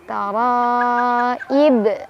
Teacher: Ada qalqalah kubro karena ada huruf qalqalah yang sukunnya karena waqaf atau karena berhenti. Yaitu huruf ba tadinya kasroh karena berhenti jadi sukun. Jadi dipantulinnya lebih besar.